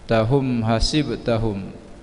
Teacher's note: mim mati bertemu ha, izhar syafawi dibaca dengan terang yang kebibiran